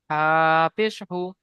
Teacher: হাটা এক আলিফ টান আছে, ওই জন্য একটু অল্প করে টান দিয়ে বলতে হবে।